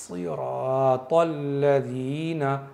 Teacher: साद के अंदर सीटी की सिफत होनी चाहिए